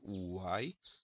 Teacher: esse som Uai tem semivogal vogal semivogal é um tritongo oral